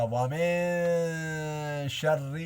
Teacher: میں نے آپ کو بتایا تھا نون ساکن کے بعد حروف اخفا میں سے کوئی حرف آ جائے یا نون تنوین، دو زبر دو زیر کے بعد اگر ان حروفوں میں سے کوئی حرف آ گیا تو وہاں اخفا کیا جائے گا، ناک میں آواز لے جا کر چھپا کر پڑھیں گے